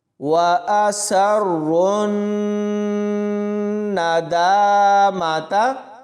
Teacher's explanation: سین کو را کے ساتھ ملائیں گے، سختی سے پڑھیں گے اور را موٹا پڑھیں گے، را کو پھر آگے سیدھا نون کے ساتھ ملانا ہے۔